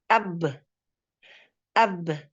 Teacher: karena ba ini mempunyai sifat qalqalah, maka dia lepas. Setelah tasodum langsung lepas.